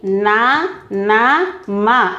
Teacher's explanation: అనునాసికాలు ముక్కు సహాయంతో పలుకబడే అక్షరాలు